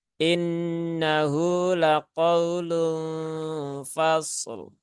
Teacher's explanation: I-nya tipis ya, jangan terbaca E ya, karena masih banyak yang membaca huruf-huruf yang kasroh itu tanpa disadari menjadi miring terbaca innahu ya.